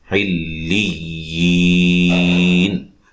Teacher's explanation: لام کو یا سے ملائیں گے سختی سے، ٹھیک ہے، مشدد حرف ہے، لام بھی یا بھی۔